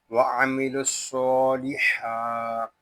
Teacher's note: یہ ہا حلق کے درمیان والے حصے سے ادا ہوتا ہے اور اس کو جب ادا کریں گے تو حلق پر زور دے کر اس کو ادا کریں گے